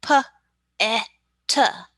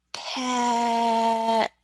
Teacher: is that they put an extra uh on that word so instead of just using three sounds they've now put two extra little uh in there